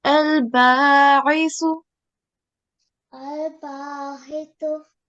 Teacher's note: the letter with Kasra is Ain. So this is read from the middle of the throat and it is read flexibly